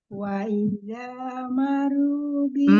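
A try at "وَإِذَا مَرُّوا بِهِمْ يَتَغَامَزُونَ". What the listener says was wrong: Marru, tahan ro tasdidnya. Marru.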